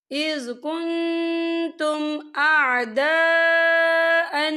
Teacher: یہ دیکھیں اِذْ كُنْتُمْ أَعْدَاء، یہاں پر خاللی سے پہلے زبر ہے اور اس پہ مد بھی ہے، تو ہم اسے 4 حرکت کے برابر کھینچ کے پڑھیں گے